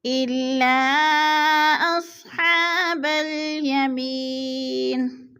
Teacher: رہینہ الا اصحاب الیمین۔ الا حروف مدہ کے بعد حمزہ دوسرے کلمے میں ہے تو مد منفصل ہے، چار الفی مد ہے، اس کو ہم نے چار الف کے برابر کھینچ کر پڑھنا ہے